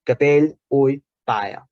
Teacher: Ja hi ha una iodització tal com la tenim en mallorquí actualment